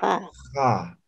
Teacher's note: Entonces es una X fricativa, ¿no ve? Es una J fricativa